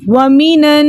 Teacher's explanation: نون ساکن کو ہم نے نون مفتوحہ سے ملا کر پڑھا، یعنی زبر والے نون سے ملا کر پڑھا۔